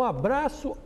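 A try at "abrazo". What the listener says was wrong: Só que com Z. Não é abraço, é abraço.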